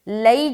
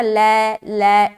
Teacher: لئی جو پڑھ رہے ہیں یہ معروف ہے، اور جو لوگ پڑھتے ہیں نا لے یہ مجہول ہے، تو ایسا نہیں پڑھنا.